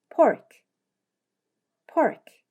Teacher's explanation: 이렇게 입술을 붙인 상태에서 힘을 주었다가 터뜨리며 폴 하고 발음 하셔야되요